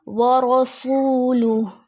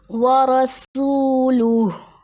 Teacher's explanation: سین کو باریک سیٹی کے ساتھ پڑھا جاتا ہے اور رو کی موٹائی برقرار رکھتے ہوئے